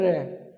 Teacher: जीवा की नोक उठेगी लेकिन ऊपर लगेगी नहीं · इसके उच्चारण में जो जिह्वा है वो वर्तस्य की ओर उठती है। इसको आप एक शब्द और लिख लो इसका, प्रकंपित। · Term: लुंठित, प्रकंपित व्यंजन